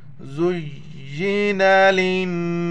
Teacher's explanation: لام کو نون کے ساتھ ملائیں گے، اس لام کو نہیں پڑھیں گے، اس پر کوئی زبر زیر پیش نہیں ہے۔